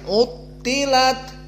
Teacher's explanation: tho dalam keadaan harf istilla maka dia mufakhamah maka tafkhimnya kuat dikarenakan tasdid